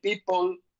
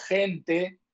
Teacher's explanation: people tiene dos bilabiales y gente no tiene ninguna